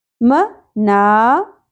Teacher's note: میم کی زبر زیادہ نہیں کھینچی جائے گی، لیکن اس زبر کے ساتھ الف حرف مدہ ہے، ایک الف کے برابر کھینچا جائے گا